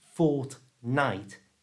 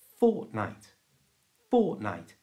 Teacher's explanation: to say this properly don't pronounce the T in the middle